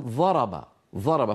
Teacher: فيستعملون طرف السنتهم بدل حافه اللسان يجدونه اسهل